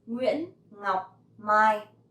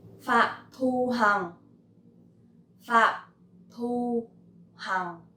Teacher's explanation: So Phạm has dấu nặng, Hằng has dấu huyền, and Thu has no tone.